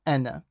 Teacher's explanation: So this alif on this noon is not stretched. So whenever ana comes in the Quran by itself as a word, then the alif becomes silent. So you don't stretch it. So you just say ana.